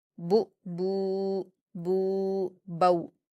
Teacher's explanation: وہاں پر با پر واؤلین ہے لاسٹ کلمے میں، با واؤ زبر بو، یعنی با پر واؤلین ہے، واؤ ساکن سے پہلے با پر زبر ہے اس لیے واؤلین ہو رہا ہے، تو اس کو ہم نرم آواز کے ساتھ جلدی پڑھیں گے